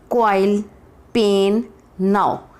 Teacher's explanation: A diphthong is a combination of to vowel sound in a single syllable. The sound begins with one vowel and move towards another.